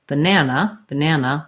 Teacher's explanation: So look at that, three letter A's, right? But we only say the black cat vowel in that middle syllable. That's the stressed syllable